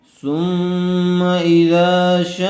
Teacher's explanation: سا میم پیش سم، میم زبر ما، ثم حمزہ زیر ای، ذال الف زبر ذا، اذا شین الف مد زبر شا۔ حرف مدہ کے بعد حمزہ اسی کلمے میں آیا ہوا ہے، اس لیے مد متصل کا قاعدہ ہوگا شین کو کھینچ کر پڑھیں گے۔